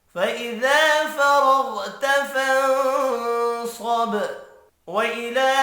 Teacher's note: لام کے اوپر کھڑی زبر ہے، ایک الف کی مقدار میں کھینچ کر پڑھیں گے۔